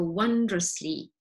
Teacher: the o is like a schwa